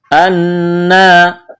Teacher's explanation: نون مشدد ہے، آواز ناک میں چھپائیں گے، غنہ کریں گے